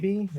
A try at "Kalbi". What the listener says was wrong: No, there's no I. It's Kalbi.